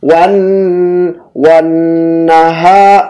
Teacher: wan nun tasydid ditahan gunnah. Wan wan naha ha panjang.